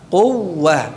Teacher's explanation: tasydidkan wawunya, tekan huruf wawunya. Jangan dipanjangkan kunya, ya. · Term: wawu tasydid